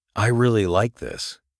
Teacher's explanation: If you say, I really like this, with stress on like, it sounds more sincere.